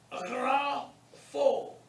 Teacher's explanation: The gamma followed by the rho is guttural. And it's pronounced rough.